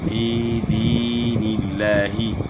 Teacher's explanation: لفظ اللہ کے لام سے پہلے والے حرف کے نیچے زیر ہے تو اس کو لفظ اللہ کے لام کو باریک پڑھیں گے